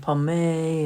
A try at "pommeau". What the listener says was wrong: It should be 2 syllables.